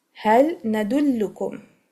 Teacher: And makhraj wise, lam is from the near edge of the tongue including the tip, and the noon is from the upper gums